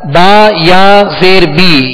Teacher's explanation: با یا زیر بی یا مدہ ہے ایک الف کی مقدار کھینچ کر